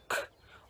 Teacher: at the back of the mouth with the back of the tongue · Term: place of articulation